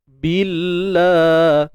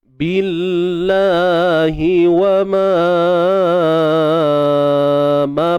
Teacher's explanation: Kalimah Allah kita baca nipis. Sebab apa? Sebab kalimah Allah sebelumnya baris bawah.